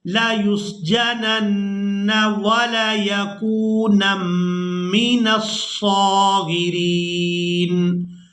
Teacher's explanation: नून मुशद्दद पर गुन्ना करेंगे